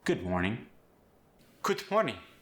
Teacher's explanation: In the word good, did you notice the D went to a T sound? In morning, we lost the G.